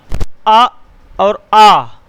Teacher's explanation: जब हम आ और आ बोलते हैं तो कंठ से आवाज़ आती है।